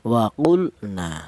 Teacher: Yang benar dibaca idhar. Artinya idhar itu dibaca jelas bahwa di sini lam matinya dibaca jelas. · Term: izhar fi'li